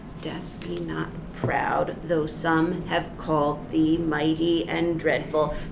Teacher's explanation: the very first foot of this is not iambic. It's reversed to emphasize death.